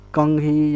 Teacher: इसके उच्चारण करते समय नासिका से हवा का प्रवाह होता है। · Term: अनुनासिक